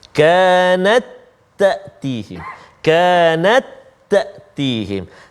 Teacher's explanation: Ta yang pertama tak berbaris, ta yang kedua berbaris. Jadi masukkan bunyi ta itu jadi satu-satu ta aja. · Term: idgham